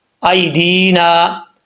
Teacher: ایدینا، حمزہ کے بعد یا ہے، یا ساکن ہے، یا ساکن سے پہلے زبر ہو تو یا لین ہوتا ہے مدہ، یعنی اس کو لمبا نہیں کریں گے، یا لین ہے۔ · ایدینا، آگے جو دال کے بعد یا آ رہا ہے یہ یا مدہ ہے، یا ساکن سے پہلے زیر ہو تو یا مدہ ہوتا ہے، یا مدہ سے مراد یعنی لمبا کیا جاتا ہے ایک الف کی مقدار